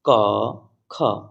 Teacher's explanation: तो इसका जो प्रत्येक वर्ग होता है, प्रत्येक वर्ग का पहला और दूसरा अक्षर जो होता है वो अघोष व्यंजन होते हैं।